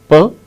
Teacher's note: P is a voiceless sound. It is a voiceless bilabial plosive. Plosive. When we utter P, air comes out all of a sudden from our mouth.